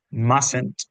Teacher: En la pronunciación, si nos fijamos, mustn't, esa primera T no suena. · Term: silent letter